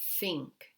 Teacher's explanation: we are not voicing the th sound it is just air being pushed out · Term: unvoiced dental fricative